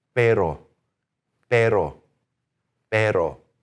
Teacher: what are we going to do with that P? We're going to take the air out of it, right? · Take the air out, flap your R, and you're sounding like a native speaker. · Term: Spanish R